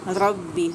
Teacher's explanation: रा को पुर करके अदा करेंगे